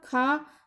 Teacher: जब आपने पढ़ा खा तो आपको लगा कि इन कंपैरिजन टू का के आपको ज़्यादा जो है वो एयर की ज़रूरत पड़ी बोलने के लिए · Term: महाप्राण